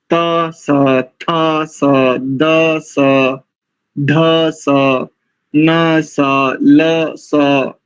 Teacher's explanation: आप दंत सकार का तालव्य ना करें